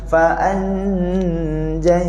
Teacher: Jadi sekarang ni masa kita sebut fa'an, masa kita sebut an tu standby terus, lidah kita kena langit-langit atas tengah lidah. Nanti kita akan dengar dengung huruf jim.